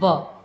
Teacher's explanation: तो दंत और ओष्ठ यानी दांत और होठ दोनों की सहायता से बोलने वाला केवल वर्ण एक ही है, व, ठीक है। व जो है वो दंत और ओष्ठ दोनों की सहायता से उच्चारित होता है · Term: दंत ओष्ठ